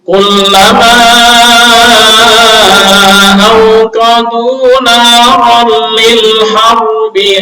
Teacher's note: Al-harbi di sini sifatnya hanya tafkhim, nggak ada sifat gunanya, nggak ada.